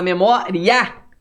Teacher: Só que você vai perceber que quando você fala memória, o A sai mais forte que o I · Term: ditongo crescente